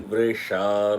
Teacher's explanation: The vr is with the lips wide open, not closed.